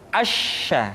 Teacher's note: dikeluarkan dengan cara mengangkat Tengah lidah kita ke langit-langit